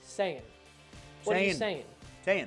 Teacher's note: You have to get rid of that G so it's not an ing sound anymore